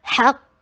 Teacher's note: حق قاف ہیوی اور فتحہ شارٹ